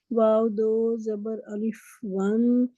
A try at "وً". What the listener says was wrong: واو کے لیے ہونٹ بھی گول کریں پہلے. ون,